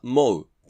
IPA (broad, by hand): moʊ